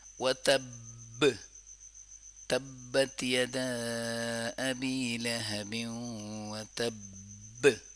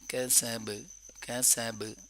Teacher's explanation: لیکن وتب میں جو ہے اس کو کہتے ہیں اسٹرانگ قلقلہ، سخت قلقلہ